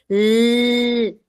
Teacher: Luego tenemos el modo de articulación lateral. El aire pasa por los lados de la lengua para poder articular la L. La L. Tú vas a darte cuenta que ese aire calientito va a salir por los por los costados de tu lengua.